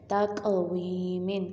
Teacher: قاف کو ہم نے ہلا کے پڑھا، کیوں؟ کیونکہ یہ حرف قلقلہ ہے